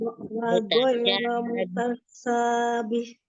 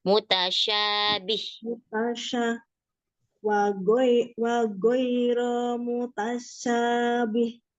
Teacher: Ya, shinnya di tengah-tengah lidah